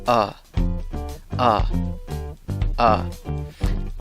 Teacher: no se pronuncia ni con una A, ni con una E, ni con una O, sino con la vocal neutra, schwa, cuyo sonido es A.